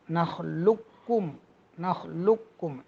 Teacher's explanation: قاف کی آواز بالکل باقی نہ رہے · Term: مکمل ادغام